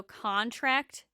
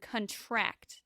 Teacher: Stress on the first syllable is a noun, and stress on the last syllable is a verb. So contract and contract.